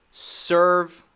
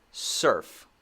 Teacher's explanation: it's similar to the v sound except you take out the voice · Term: f sound